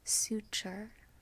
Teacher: in casual or standard American English we pronounce the T actually as a CH sound